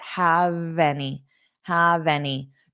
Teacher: hold that v sound on have and take it to your next word